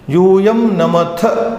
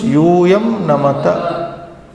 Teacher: Mahaprana becoming Alpaprana. Stress, no stress.